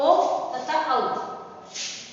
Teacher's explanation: अब देखो कंठ किसका उच्चारण स्थान है, अ का है, ठीक है, और ओष्ठ ओठ प का है, ठीक है, तो ओ तथा औ, कंठ ओष्ठ से ओ और औ स्वर वर्णों का उच्चारण होता है